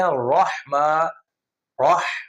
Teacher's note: رحمہ، اس کو وحمہ کرتے ہیں، وحمہ نہیں کرنا، اس کو کرنا ہے رحمہ، رح، ہا کی آواز آئے